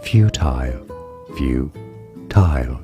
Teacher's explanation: In British English, it is said as futile, futile, stress on the first syllable.